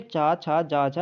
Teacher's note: तो देखो फ्रेंड, जो चा वर्ग होता है ये आपका क्या होता है, तालव्य होता है। ठीक है, चा छा जा झा ये आपका तालव्य से उच्चारित होता है